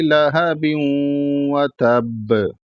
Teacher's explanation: نہیں، لام پر بھی زبر ہے اور ہا پر بھی زبر ہے، تو لہبیوں پڑھنا ہے. اس کے بعد با کے نیچے جو تنوین ہے، دو زیر ہے، اس کو واو میں ملائیں گے، اور جب واو ملائیں گے تو وہاں گنہ ہوگا